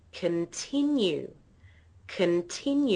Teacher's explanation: The middle syllable is stressed. Okay, so if you have a listen to the tone or the pitch of my voice, you'll notice that it goes up on the second syllable. · that word has three parts three syllables continue the middle syllable is stressed